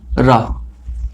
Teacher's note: प्रकंपित क्यों, क्योंकि रा का जब उच्चारण किया जाता है तो थोड़ा सा कंपन उत्पन्न होता है